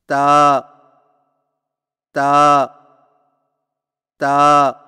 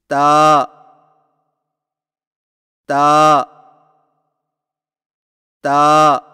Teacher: تا کی ادائیگی میں زبان کی نوک کو سامنے والے اوپر کے دو دانتوں کی جڑ سے لگا کر باریک آواز میں پڑھیں